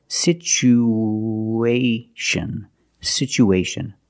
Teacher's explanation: situation we have two vowels together the U and the a we need to link these vowels with the sound like the W sound